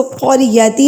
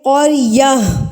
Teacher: وقف کی صورت میں یہ گول تا جو ہے گول ہاں میں تبدیل ہو جائے گی. آپ اس کو قریتی نہیں پڑھیں گے, آپ اس کو پڑھیں گے قریہ.